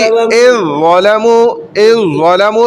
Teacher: ऐसे ही इज़ ज़लमू तो दाल नहीं पढ़ा जा रहा, इज़ ज़लमू नहीं बोलेंगे, डायरेक्ट ज़ौ पढ़ा जाएगा, इज़ ज़लमू ज़ौ डायरेक्ट पढ़ा जाएगा बराह रास्त, ठीक है। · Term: इदगाम मुतजानिसैन ताम